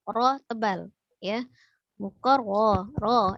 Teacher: Ketika ro-nya tasdid berarti ro-nya ada 2 huruf ro ya, di mana satu huruf ro sukun dan satunya ro fathah. Nah, ketika ro itu sukun sebelumnya dia fathah maka terbaca tebal